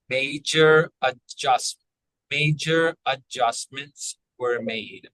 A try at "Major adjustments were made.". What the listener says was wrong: So it's not going to be add, it's going to be adjustments. So the D is silent. Eh, like men.